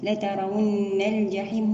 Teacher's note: لترون الجحيم، هنا همزة الوصل تسقط وصلا، ونأتي ببينية اللام